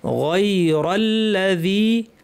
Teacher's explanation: তানউইনটা ইজহার করে স্পষ্ট করে পড়তে হবে, কারণ গয়ন একটা হালকের হরফ। হামজা হা, আইন হা, গয়ন খ, 6টি হালকের হরফের একটি।